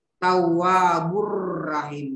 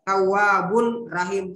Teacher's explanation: Karena ada dammatain bertemu dengan huruf ra dan cara membaca itu tidak berdengun. Cara baca bagaimana itu seolah-olah mau disebut ini huruf ra. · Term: idgham bila gunna